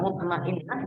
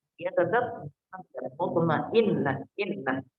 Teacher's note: Hamzah, jadi hati-hati, hamzah ini dibacanya dari dada